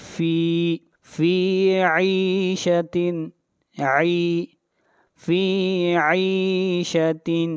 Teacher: فی کو کھینچ کر پڑھیں گے ایک الف کے برابر